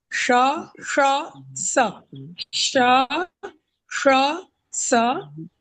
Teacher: पहला है श यानी तालव्य श, श यानी मूर्धन्य श, और स यानी दंत स